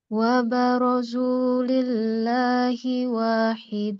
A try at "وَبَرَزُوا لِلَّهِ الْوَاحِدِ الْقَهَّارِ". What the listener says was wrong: Il. Ada alif lam. Lillahil.